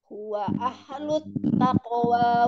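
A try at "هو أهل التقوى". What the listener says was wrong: Haknya kan Umi jangan dipantul tadi kedengarannya kayak ahlut tapi alir aja ahlut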